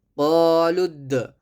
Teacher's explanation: یہاں دال پر قلقلہ کریں